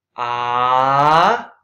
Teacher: it's like a Nike symbol going up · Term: rising